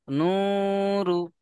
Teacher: ও মাদ্দাকে এক আলিফ পরিমাণ টান দিয়ে পড়তে হবে র এর উপরে পেশ আছে একে হারাকাত বলে হারাকাতের পড়াকে তাড়াতাড়ি পড়তে হবে টান দেওয়া নিষেধ যেমন নূরু হ্যাঁ প্রথম অবমাকে এক আলিফ টান দেবেন তারপরে এসে রকে টান দেওয়া যাবে না।